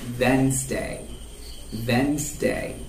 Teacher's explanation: the d is silent